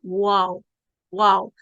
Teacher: तो वाओ की जो अदायगी है उसकी अदायगी के लिए होंठों को आपस में मिलाते नहीं है या होंठ आपस में जुड़ते नहीं है, बल्कि होंठ एक गुलाई की शक्ल में होते हैं और इससे वाओ की अदायगी होती है